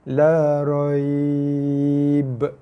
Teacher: Kita berhenti pada huruf lin, dia jadi mad lin 4 harakat. La raib. Qalqalah ba.